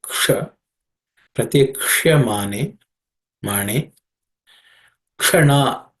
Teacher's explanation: ksha is again a cerebral sh, so tongue has to point upward